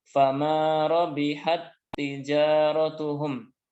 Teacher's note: Ya, dibaca langsung fama rabihat tijaratuhum. Ya, jadi untuk idgham mutamasilain dibaca dengan tanpa gunnah, tanpa dengung